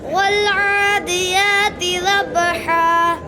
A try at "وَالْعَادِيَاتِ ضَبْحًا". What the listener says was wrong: ضاد मोटा करो. ضبحا.